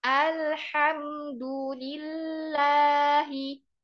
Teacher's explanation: lafaz Allah di situ dibaca dua harokat. Ya, dipanjangkan.